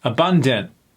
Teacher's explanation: that a at the end is not even pronounced. It becomes more of a I sound.